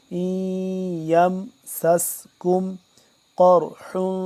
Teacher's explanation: سین کو سیٹی کی آواز سے پڑھیں گے